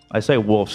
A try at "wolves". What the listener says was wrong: With the V, wolves? Wolves. I think you're fine. I don't think it's a big deal. Wolves. I mean, why is it an F change to a V anyway?